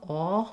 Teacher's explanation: I will also sometimes hear people substitute the British aw for this vowel, aw, which is more open and further back in the throat. We don't have this vowel in American English.